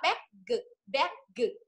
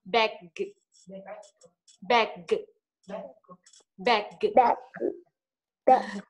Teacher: chữ G cuối một chữ chúng ta giảm volume đi nhé, bởi vì là volume chỉ đọc nhỏ bằng 2/3 so với âm trước nó thôi.